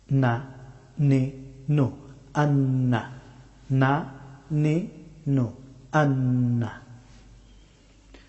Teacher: নুন হরফটি উচ্চারিত হয় জিহ্বার সামনের অংশের কিনারা এবং উপরের তালু।